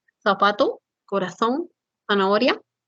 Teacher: se emplea la fricativa interdental sorda